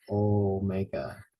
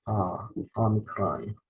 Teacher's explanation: Now notice the sound is ah, omicron. Omega has the long O, omega. Omicron has the short O sound, ah, omicron.